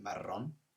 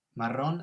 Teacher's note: we've got that nice rolling r in maron